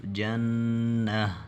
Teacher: یہ گولتا جہاں پر بھی آ جائے وقف کے وقت یہ ہا بن جاتا ہے